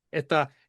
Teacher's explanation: a lot of S's, it seems, internally turn almost to an H.